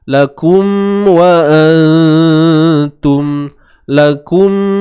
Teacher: Mim mati bertemu waw, izhar. Jelaskan mim tu. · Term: izhar syafawi